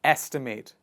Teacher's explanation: The focus of the pronunciation goes on the first part of the word estimate